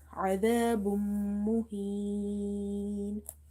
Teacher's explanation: This is from the Yarmalun letters, and if this situation arises you have to do the merging as well as nasalization